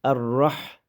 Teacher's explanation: Ha kananing o'rtasidan chiqarib o'qiladi.